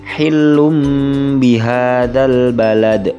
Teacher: pelafalannya adalah lanasfaam bin nasiah sedangkan yang kedua hillum bihadal Balad domah tanwin yang terdapat pada huruf lam bertemu dengan huruf ba sehingganya domah tanwin menjadi mim mati